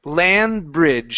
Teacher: Don't finish the D sound. So, it's gonna be a stop D.